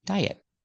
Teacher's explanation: the T in diet it's at the end of the word after a vowel it's a stop T don't say diet don't release a te diet he went on